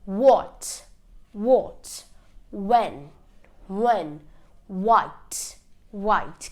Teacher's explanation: I'm not pronouncing the H, I'm only pronouncing the W. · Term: silent H